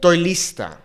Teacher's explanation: It's almost like she omits that E in estoy.